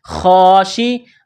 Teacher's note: خا کو موٹا کریں گے. جس طرح انسان گلے سے بلغم نکالتا ہے اسی طرح اس خا کو نکالیں گے. خا کے اوپر کڑا زبر ہے، ایک الف کی لمٹ میں کھینچنا ہے.